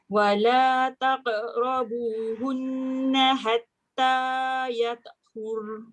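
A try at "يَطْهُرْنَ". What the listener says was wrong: Jangan yata. Yata tebal tak? Hatta yatahurn. Yata. Yatahurn. Bunyi ra, bunyi nun.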